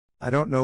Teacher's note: Pero esta vez, pongamos atención a cómo el pronombre I. casi reduce su sonido al sonido de una letra A